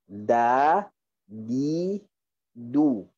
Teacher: Dal, tekan. Okey, bila kita tekan, maka dal tidak ada angin. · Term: huruf dal